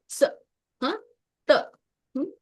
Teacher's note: ಸ ಅನ್ನೋದು ಕೆಳಗಡೆ ನಾಲ್ಗೆ ಕೆಳಗಿನ ಹಲ್ಲಕ್ಕೆ ಹೋಗಿ ಬಡ್ಕೊಳ್ಳುತ್ತೆ. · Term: ದಂತ್ಯ